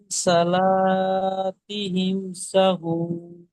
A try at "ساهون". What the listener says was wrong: সা, সাটা টান আছে, সাহুন।